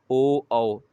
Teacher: ओठ को भी आप घुमाएंगे और आवाज़ थोड़ी भारी भारी आएगी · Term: कंठोष्ठ